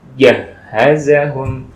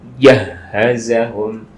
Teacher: Nah, bukan jah, tapi jahazahum. Kalau jah itu berarti ujung lidah ya, tapi harus di tengah lidah untuk yang jim.